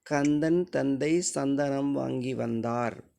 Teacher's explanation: இத்திந்த ஆகிய இருமைகளும் மேல்வாய்ப்பல்லின் அடியை நாக்கின் நுனி பொருந்துவதால் பிறக்கின்றன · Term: வல் மெல் மெய்கள்